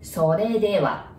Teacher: So there is no R sound in Japanese, right? You pronounce it like L.